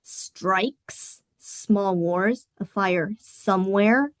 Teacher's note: the repetition of the S sound. This creates an unsettling hissing sound that evokes a feeling of unease. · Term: sibilants